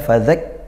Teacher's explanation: Fadzakir karena dia lebih ke tasydid, yaitu kuat artinya ya, syiddah, tasydid seperti itu. Sifat tasydid atau sifat syiddahnya kaf yang dimunculkan, tidak hamsnya, sifat lemahnya tidak muncul. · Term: kaf bertasydid